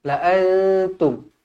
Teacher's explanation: Nun kosong bertemu dengan ta ikhfa Hakiki dengung dua harakat